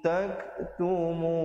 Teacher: tum izhar syafawi, bunyi saja tum, terus masuk tak, ada hamas di situ, tak tumun.